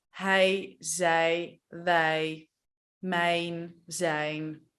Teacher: It's actually pronounced like a short I, but not in the throat, in the mouth. So instead of it sounding like I, it sounds like I.